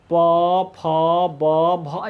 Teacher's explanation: प बोलते हैं, फ बोलते हैं तो ओंठ सटता है। जब ओंठ सटता है तो ये क्या हो गया हमारा, तो हो गया ओष्ठ्य।